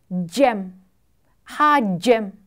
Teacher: 차 오치 이렇게요 그다음에 즈 즈 소리예요 영어 저지에 주처럼 발음하면 이때 혀끝은 윗 잇몸에 대고 즈를 발음하는 것과 유사하다